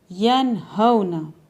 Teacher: نون کو ظاہر کر کے بلا غنہ جلدی ادا کریں گے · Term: اظہار